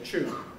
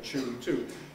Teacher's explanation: the second element whatever it is semi-vowel and fricative is actually voiceless because of the aspiration